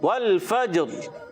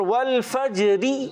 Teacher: را پر کرنے کے لیے ہماری زبان جو ہے یہ تھوڑا اوپر کی طرف یعنی تالو کی طرف جائے گی تو پھر را پر ہو جائے گی